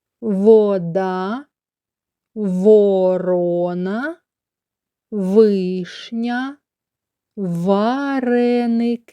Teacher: зубів язик не рухається лежить внизу ротика верхні зубки трішечки видно при вимові звука в губи і зуби створюють перешкоду вільному виходу повітря з ротика · нижня губа наближена до верхніх зубів язик не рухається лежить внизу ротика верхні зубки трішечки видно при вимові звука в губи і зуби створюють перешкоду вільному виходу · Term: звук в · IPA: [в]